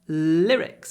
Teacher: Hold the l. Lyrics. And it's quite a short I sound.